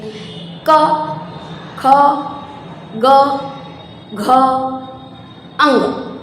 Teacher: सारे साउंड आपको गले में से निकलते दिखेंगे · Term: कवर्ग